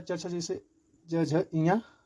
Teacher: च वर्ग का उच्चारण किससे होता है तालू से